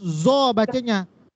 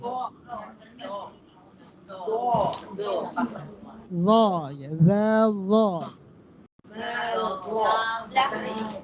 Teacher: Dirasakan lo tanpa desis.